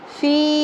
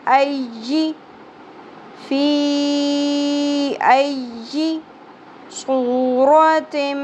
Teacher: فی مد ہے، مد منفصل 3 الف کے برابر